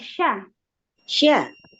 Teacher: huruf shin ada sifat khususnya ya, ada tafashi. Jadi sya disebarin, jangan lupa.